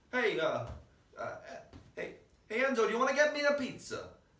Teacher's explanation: the melodies is what's called a high low high low accent so you go up you go up to the accent man